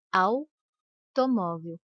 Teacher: Repare que o A é pronunciado com mais intensidade que a letra U. · O U quase não aparece, por isso ele é chamado de semivogal.